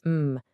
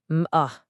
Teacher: It is all about using pure sounds. When you make the sound for the letter M, it should be a long continuous m